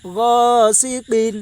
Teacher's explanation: الف سے پہلے زبر ہے، اس لیے الف مدہ ہوگا، الف مدہ کو ایک الف کے برابر کھینچ کر پڑھیں